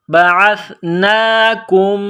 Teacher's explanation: بعثنا، کاف میم پیش کم، میم ساکن ہے۔ میم ساکن کے بعد اگلی میم ہے جو مشدد ہے، تو یہاں آواز ناک میں چھپائیں گے، غنہ کریں گے، اور کاف کو اس میم کے ساتھ ملانا ہے، پلس کرنا ہے۔